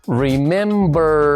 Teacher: ¿Verdad que sentimos una vibración aquí en la garganta?